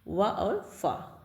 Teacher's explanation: दंतोष्ठ से निचले ओठ और ऊपर के दांतों से मिलके जो बनते हैं उसे दंतोष्ठ कहते हैं।